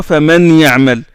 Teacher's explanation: Le noun entre, idgham, entre dans le ya.